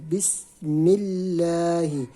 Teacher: تو اللہ کے لام سے پہلے زیر ہو، جس طرح آپ دیکھ رہے ہیں کہ تسمیہ کے اندر ہم دیکھ رہے ہیں اللہ کے لام سے پہلے میم ہے اور میم کے نیچے زیر ہے، تو اس کو ہم باریک پڑھیں گے